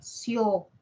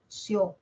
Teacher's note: De cerrada se abre, abierta, sio. Y se escucha más la o, sio. Aquí encontramos dos diptongos.